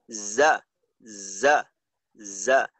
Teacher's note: জার মাখরাজ হলো জিহ্বার আগা সামনের নিচের সানায়া সুফলার সাথে।